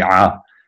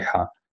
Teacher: The only difference is that ayin is voiced while you're constricting the throat muscles, and het is unvoiced.